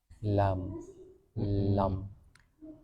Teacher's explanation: Pertama, bayiniah pada huruf lam yaitu hembusan sebagian suara pada saat pengucapan lam karena ujung lidah menghalangi keluarnya hembusan huruf ini. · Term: bainiah, bainiyah